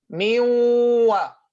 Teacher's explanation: it's a waw mushaddada and it has ghunnah on the first part.